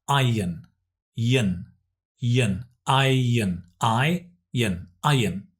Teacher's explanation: We don't pronounce the R, it's iron, yin, yin, iron, iron, iron. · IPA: /aɪən/